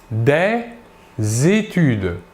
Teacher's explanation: Ici, nous faisons la liaison entre le S et le E.